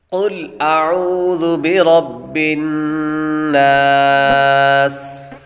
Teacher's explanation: عین کے بعد واو حروف مدہ ہے، اس لیے اس کو لمبا کریں گے